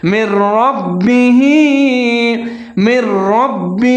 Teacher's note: اب یہاں پر نون جو حرف ہے یہ حذف ہو جائے گا، جیسے من ربہ، میم اور را کو ملا کے پڑھیں گے اور را کو موٹا کر کے پڑھیں گے، لیکن آگے پھر با کے اوپر تشدید ہے، را اور با کو ملا کے پڑھیں گے، ان کو مضبوطی کے ساتھ پڑھیں گے۔ آگے ہا کے نیچے کھڑی زیر ہے، تھوڑا سا لمبا کر کے پڑھیں گے